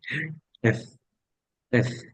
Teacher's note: এফ উপরের দাঁত নিচের ঠোঁট